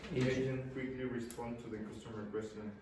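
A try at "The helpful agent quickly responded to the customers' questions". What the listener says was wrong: Okay, so if you want to get better pronunciation as a Spanish speaker, you have to pronounce the last consonants. So you said respond and not responded, and then you said customer instead of customers. Now, if you don't pronounce those last consonants, you'll be misunderstood.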